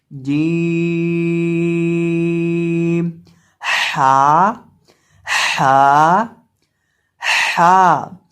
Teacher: हा अदा होता है हलक के दरमियान से, हलक के वस्त से। · जुबान का दरमियान जब ऊपर मद्दे मुकाबिल तालु से लगता है तो जीम अदा होता है।